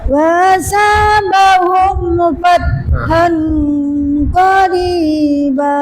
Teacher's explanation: Jadi harus jelas mim sukunnya, tidak boleh ada dengung. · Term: izhar syafawi